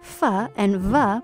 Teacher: you make fa and va by putting your bottom lip against your top teeth. The only difference is that your throat vibrates when you say va.